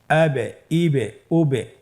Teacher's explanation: একটা double sound হচ্ছে এটাই কলকালা। উচ্চারণের সময় একটু ধাক্কা দিয়ে উচ্চারণ করলেই কলকালা হয়ে যাবে